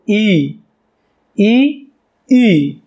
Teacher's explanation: મોટા ઈના ઉચ્ચારણમાં વધુ સમય લાગ્યો એટલે એને આપણે કહીશું દીર્ઘ સ્વર